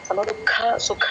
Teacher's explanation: అక్కడ ఖాలు మహాప్రాణాలండి ఖ గట్టిగా పలకాలి